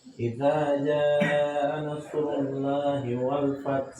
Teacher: Lamnya tebal lafaz Allah.